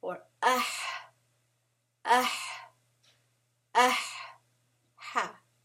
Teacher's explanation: So ayn and ha are the two that come from the middle throat.